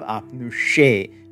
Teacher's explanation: we'll have apnushe with the retroflex S, triggered again the S.